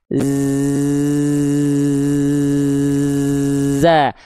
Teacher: Desisan huruf zai kalau bocor ya ada nafasnya, jadinya bocor jadi huruf sin. Zai itu mengalir desis tanpa nafas. · Zai hanya desisan suara, bukan desisan angin. Desisan suara.